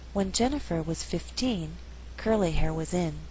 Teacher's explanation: curly hair was in here we did not stress hair here 15 is at the end of a phrase so the second syllable is stressed also here in is not a preposition it's not a function